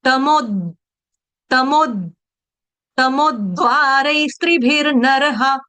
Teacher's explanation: तमोद्वारै स्त्रीभिर्नरः, तमोद्वारै, यहाँ पर देखो, तमो, है ना, तमो, मैं रुक गई ना, द का उच्चारण पूरा नहीं करना है, द का उच्चारण हल्का सा करना है, टच देना है।